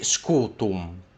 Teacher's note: Now if you don't want to sound barbaric in Latin, you don't want to say scutum, scutum, like it's like you can hear the M, scutum, scutum. You don't want to pronounce that M very well, so you just say scutum, and that M is still in there, but it's not as visible.